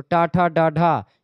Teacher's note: मूर्धा ऊपर वाला जो भाग होता है उसमें जीभ मुड़ती है, मूर्धा में लगती है। तो टा ठा डा ढा ये मूर्धन्य ध्वनियां है।